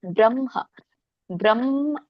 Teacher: ಇಲ್ಲಿ ಮ ಹೇಳಿ ಆಮೇಲೆ ಹ ಹೇಳಬೇಕು